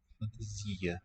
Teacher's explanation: the final a, if it's not accented, will be raised to a schwa sound, which Spanish does not have.